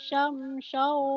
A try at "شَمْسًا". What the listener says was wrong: Yang keduanya kecil. Yang pertama gede, yang kedua kecil. Ketuker di koma. Ya, jangan ditukar-tukar.